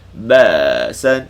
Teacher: Hu ashaddu ba'san. Sukun ni, sukun hamzah sukun ni putuskan suara. Jangan ada baki suara.